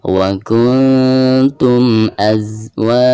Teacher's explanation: mim sukunnya itu harus dijelaskan dengan cara merapatkan 2 bibir ya. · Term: izhar syafawi